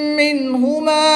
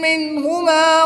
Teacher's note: نون ساکن کے بعد ہا حروف حلقی میں سے ہے تو یہاں پر اظہار ہوگا، نون ساکن کو خوب ظاہر کر کے پڑھیں گے